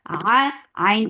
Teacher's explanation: Ain from your throat for fatha open jaws.